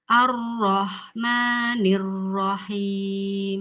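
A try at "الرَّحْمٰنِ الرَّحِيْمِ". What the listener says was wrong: Ibu kita perbaiki h-nya dulu ya. Coba Ibu dengarkan suara saya.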